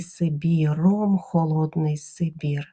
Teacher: Сибір на відміну від Російської тверда вимова